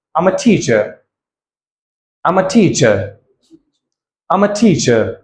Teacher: definitely your voice your tone will go down at the end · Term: full intonation